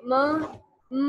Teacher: जैसे हम नून की आवाज न बोले, म बोले, तो क्या होता है हमारा पूरा मुंह बंद हो जाता है, तो साउंड इधर की बजाय से ये नाक के जरिए प्रोड्यूस हो जाती है